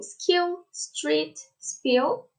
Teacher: these stops will be unaspirated in a stressed syllable and in a consonant cluster starting with s